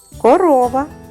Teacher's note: наголошений звук в слові корова о в другому складі